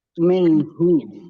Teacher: nun sukun bertemu dengan huruf ha, bacaan izhar, dibaca jelas